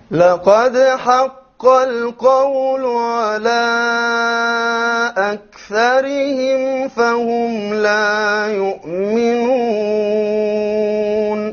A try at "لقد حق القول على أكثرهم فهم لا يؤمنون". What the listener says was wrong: Okay, we forgot the راء in أكثرهم will be light.